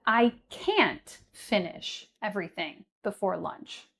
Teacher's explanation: But the difference here is that when we're using the word can't, so the contraction of cannot, that is stressed within a sentence.